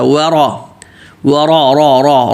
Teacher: واو پہ ہونٹ گول پتلا اور را موٹا